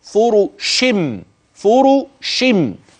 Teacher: حولنا النون اي نون التنوين الى ميم قلبت الى ميم